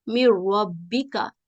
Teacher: جیسے من ربک، اس پہ جو پچھلا متحرک حرف ہے اس میں جو را کے ساتھ مشدد را ہے اس کے ساتھ ملاتے ہیں اور نون بالکل ختم کر دیتے ہیں، بالکل مدغم کر دیتے ہیں